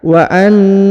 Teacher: Wa annallaha, perhatikan, wa annallaha, perhatikan huruf nun, ya, huruf na ditahan dan ditekan 2 harokat, karena di sini perhatikan terdapat tanda tasdid atau penekanan, maka dibaca wa annallaha.